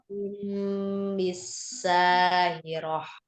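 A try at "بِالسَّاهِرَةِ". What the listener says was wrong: Alirkan sinnya. Bisa ya, jangan dipisah.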